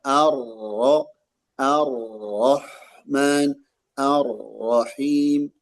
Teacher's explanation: huruf ro ketika dia ada tanda tasydid maka sifat takrirnya tidak nampak secara kuat. Ada arroh bukan arrah arrah gitu.